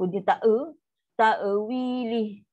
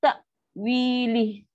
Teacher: Hamzah sifat syiddah, putus bunyi. So putuslah bunyi.